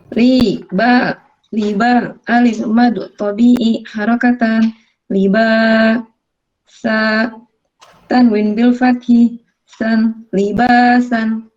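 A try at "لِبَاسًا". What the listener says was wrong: Pengucapan sudah betul, tapi ketika tahaji itu disebutkan huruf aslinya sin tanwin bil fathi san ya.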